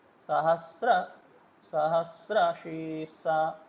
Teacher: यहाँ सहस्र और शीर्षा के बीच में जो अवग्रह है उसका उच्चारण अर्धमात्रा के ठहराव जितना होता है।